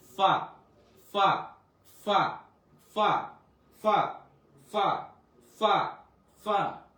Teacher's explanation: উচ্চারণ করতে হালকা একটু মুখ থেকে বাতাস বের হবে।